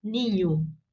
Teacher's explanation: se fosse em português, esta última palavra, ninho, nós pronunciaríamos o O final como U, ninho, né?